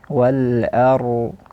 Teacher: Tapi yang seharusnya adalah ra digetarkan sedikit, irta'at khafif, getaran sedikit dengan tebal di sini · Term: getaran ra